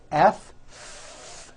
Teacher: the F sound where you're biting down on your lower lip